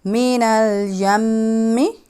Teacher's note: آپ نے دیکھا کہ میم پہ میں غنہ ادا کر رہی ہوں, میم پہ تشدید ہے, اس میں اٹ مینس کہ یہ جو ہے وہ غنہ لیٹر ہے.